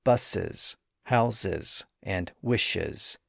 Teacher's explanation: the S ending is still pronounced as a separate syllable, specifically where the word ends in certain sibilant sounds like S or Z or Sh